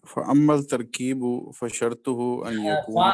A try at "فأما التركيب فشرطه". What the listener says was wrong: فا نہیں ہے، میں اس کو ذرا زوم کر دیتا ہوں.